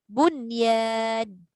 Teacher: 4 kalimah itu pertemuan dia dalam 1 kalimah. Jadi dia tidak ada dengung. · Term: izhar mutlak